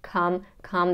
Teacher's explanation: it's an unstressed position so it's shorter and flatter and pitch come-come then we have M and the schwa but